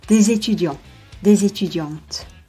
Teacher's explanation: in front of a vowel or a silent h, des is pronounced /dez/